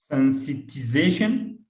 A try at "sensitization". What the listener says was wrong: No, sensitization. Because you are always pronouncing it sensibility. No, it's sensitize or sensitization. Or sensitization.